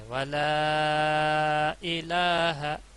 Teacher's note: مد منفصل چھوٹی مد اس کو 4 الف کے برابر کھینچا جاتا ہے